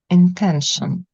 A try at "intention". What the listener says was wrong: Yeah, that's it. Intention.